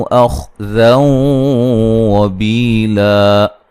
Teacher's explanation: नून तनवीन का यहाँ इदगाम माल गुन्ना है।